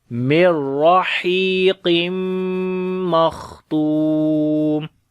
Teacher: on the kha we read again hums quality and also heavy sound. Tu we long due to waw madda.